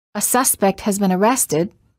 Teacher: in the sentence a suspect has been arrested arrested will get the most stress similarly we don't say the neighbors have been complaining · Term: content word